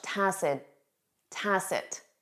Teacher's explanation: You won't hear that final T in spoken English